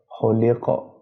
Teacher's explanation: خا پیش خو، لام زیر لی، خولی، قاف زبر قا، خلق، آگے وقف خلق، قاف زبر ہے، زبر پر جب وقف کریں گے، قاف پر جب وقف کریں گے اور زبر ہوگا تو زبر ہٹ جائے گا، جزم آ جائے گا، جزم قاف پر آنے کی وجہ سے قلقلہ کا لفظ بن جائے گا، قلقلہ کو جب بھی پڑھتے ہیں ہلا کے پڑھتے ہیں۔